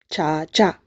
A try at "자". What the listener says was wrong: Sounds like CH. I hear CH. 자, 자.